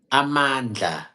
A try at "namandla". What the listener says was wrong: But it's Namandla. there's an N first. That's why I say na